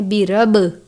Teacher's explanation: با پر قلقلہ کرتے ہیں، قلقلہ کے حروف کو واضح کر کے پڑھتے ہیں، برب، رب نہیں پڑھنا بلکہ برب پڑھنا ہے، با کو زیادہ ظاہر کرنا ہے۔